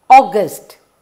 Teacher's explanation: have here first two letters or when you write august or you don't hear a and uh but you hear aw